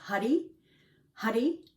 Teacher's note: the tip of the tongue Taps on the roof of the mouth